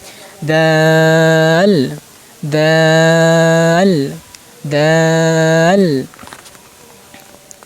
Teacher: এই যে দাল হরফ, দাল দাল যেখান থেকে মানে সামনের উপরে দুই দাঁতের গোড়ার সাথে লেগে উচ্চারণ করবেন